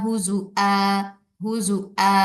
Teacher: ہزؤا حمزہ کے ساتھ پڑھیں گے، واو کو بدل دیں گے حمزہ کے ساتھ